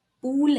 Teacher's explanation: Pool has oo, which is high back rounded vowel.